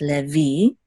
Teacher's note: So it's le, and this is that's the lamed with the tzere right here, and this is a vav with a hirik, and the yud together will say v, levi, and the accent is on the last syllable, so it's levi.